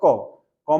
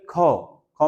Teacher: जिसमें कम वायु लगती है अल्प प्राण जिसमें ज्यादा वायु लगती है वो महाप्राण